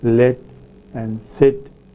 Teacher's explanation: alveolar sounds in English produced by the tip of the tongue and alveolar Ridge